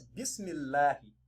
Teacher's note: So we apply tarqiq, but not tafhim, by reading the lamun lightly.